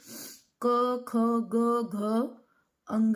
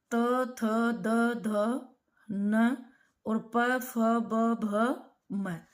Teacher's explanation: प्रत्येक वर्ग की जो पंचम ध्वनि है वो नासिक्य होती है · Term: नासिक्य व्यंजन